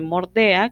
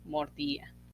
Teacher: cierre de E en grupos EA, que se vuelve IA. Sobre todo en el caso de verbos, como teníamos el caso de mordea, que se vuelve mordía.